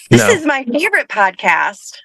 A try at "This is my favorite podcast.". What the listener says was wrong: A little more. A little more emphasis on favorite.